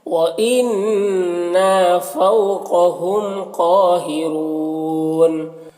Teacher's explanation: وإنا، نون مشدد ہے، اور الف مدہ، فو میں واو لین ہے، قاف حرف مستعلیہ میں سے، میم میں اظہار شفوی ہو رہا، پھر قاف پہ کھڑا زبر ہے، ایک الف کے برابر کھینچیں گے، اور قاف حرف مستعلیہ میں سے ہے، را کے اوپر پیش ہے، را کو پر پڑھیں گے، اور یہاں پر وقفی کی صورت میں مد عارض وقفی ہوگا، تو اس طرح سے پڑھیں گے.